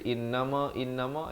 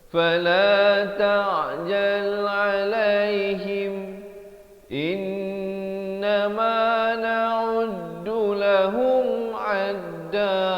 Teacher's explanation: In itu wajibul gunnah, wajib dengung dua harakat.